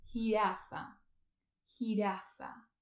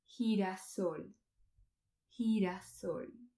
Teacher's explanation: Mais dans certains pays et même dans certaines régions d'Espagne, comme les îles Canaries, le son R est beaucoup plus doux et a beaucoup plus de lien avec le son de la H aspirée qu'on prononce en anglais